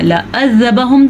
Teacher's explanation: اس عین کو حلق سے نکالنا ہے